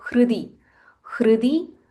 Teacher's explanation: There is h and r. There is half h and full r.